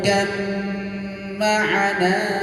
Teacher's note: ba-nya hilang karena diidghamkan ke huruf selanjutnya ya. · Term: idgham mutajanisain